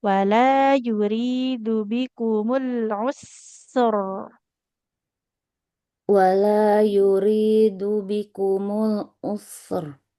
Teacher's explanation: Huruf sinnya kan mengalir dulu ya suaranya baru masuk ke huruf rnya tebal.